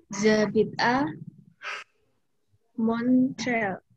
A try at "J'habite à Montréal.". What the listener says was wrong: Ya, betul, tapi pemotongannya jangan Jabit A ya. Jabit A Montreal. Jadi Jabit dulu berhenti. Jabit A Montreal.